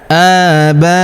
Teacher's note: Huruf a kita panjangkan 2 harokat karena terdapat alif kecil di atasnya.